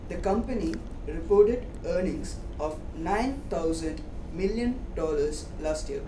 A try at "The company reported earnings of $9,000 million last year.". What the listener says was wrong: Yeah, okay, just, you know, put right stress on million.